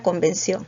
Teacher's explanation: también convención no se representa como una s entonces que tenemos tenemos mismo grafemas porque tenemos c c pero el fonema es distinto tenemos la k y la s